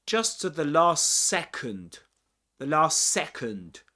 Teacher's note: in this case, we drop the final T at the end of last